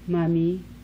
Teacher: Voiced bilabial nasal.